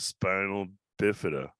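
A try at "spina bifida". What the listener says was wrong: You pronounced it wrong. It's spina, not spinal. There's no L.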